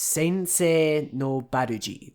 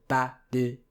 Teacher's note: The se part is long, and the Barrage is all short